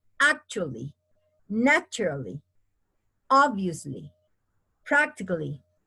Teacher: Only 3 syllables, okay? Accent on the first syllable, 3 syllables.